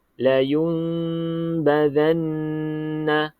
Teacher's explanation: kita dengung dengan ada sedikit regangan antara bibir atas dan bibir bawah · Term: iqlab